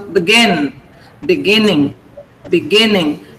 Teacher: The stress is on gin. So begin. Beginning.